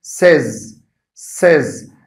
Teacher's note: the sound in this word is not long A, but it's short E.